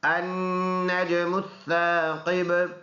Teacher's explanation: نون میں غنہ ہوگا، کیونکہ نون مشدد ہے پکا غنہ ہوگا. نون اور جیم ملائیں گے النج، جیم میں قلقلہ بھی ہے.